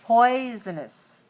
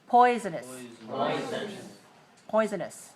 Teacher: it's three one oh but it's very reduced for syllable two and three